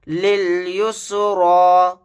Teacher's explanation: را کو موٹا یعنی پر پڑھیں گے، یا نہیں پڑھا جائے گا